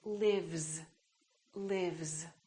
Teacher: word live live this is a voiced sound v v therefore this s is also going to be a voic sound which is a z